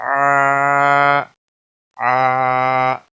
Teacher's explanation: عین کھڑی زبر آ، آ، عین کی آواز نکالنی ہے، وسط حلق والا ہے